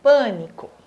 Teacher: Sílaba forte é o pã. Né, ó, pânico.